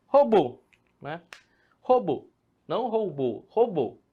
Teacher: a tonicidade maior está em robô, na última sílaba